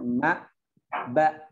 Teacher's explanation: Itbaq namanya, dirapatkan, nempel antara bibir bawah dengan bibir atas.